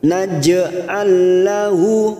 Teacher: ada huruf lam sukun bertemu lam, 2 huruf yang sama, yang pertama sukun, namanya bacaan idgham mislain. Masuk pada huruf lam berikutnya tanpa ditekan lama-lama, hanya masuk.